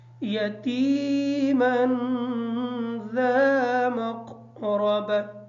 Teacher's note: مقربہ کی جو را ہے اس را کو پر پڑھیں گے